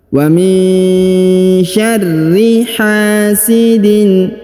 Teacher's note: ditasdidkan atau dibaca dengan ditekan dan ditahan dua harakat Warri hasidin huruf ha dibaca panjang dua harakat karena di depannya terdapat Alif